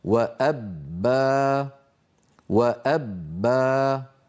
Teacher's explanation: الباء المشدده المفتوحه واللوحه مكتوب عليها ينحبس الصوت فين خلف الشفتين ويهتز الوتران الصوتيان عند نطق الباء المشدده · فالباء الفصيحه العربيه الصحيحه مجهوره شديده لابد من بيان انحباس كلا الامرين الصوت والنفس عند نطقها